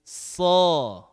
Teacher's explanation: jadi dibuka mulutnya tanpa mengumpulkan bibir. So. Nah, jadi bukan membuka bibir, tapi membuka mulut. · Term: huruf tebal